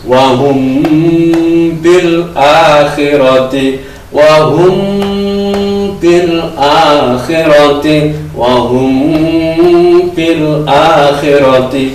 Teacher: mem ketemu ba kita baca mendengung